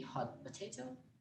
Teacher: The T in hot is dropped as the lips prepare for the P sound for potato. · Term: assimilation